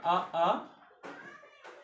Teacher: आ बोलकर देखिए, वो कंठ वर्ण है। आ। उसके बाद थोड़ा सा ऊपर बढ़ेंगे हम तो तालु ऊपर की तरफ होता है।